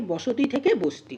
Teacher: দুটো ব্যঞ্জনের মাঝে স্বরধ্বনি ছিল কিন্তু স্বরধ্বনি লোপ পেয়ে গেল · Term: সম্প্রকর্ষ